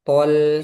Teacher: E thnya tebal, lamnya tipis.